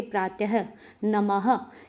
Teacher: विसर्ग का उच्चारण हल्के ह की भांति प्रतीत होता है, यह भी अनुस्वार की भांति स्वरों के बाद आता है।